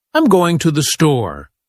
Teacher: We stress store because it's the key word.